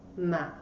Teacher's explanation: the third one goes down and then goes up